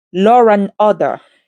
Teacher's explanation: You can hear the sound R in between, making the flow smoother. The reason why this happens is that English avoids having two vowel sounds crash into each other. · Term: intrusive R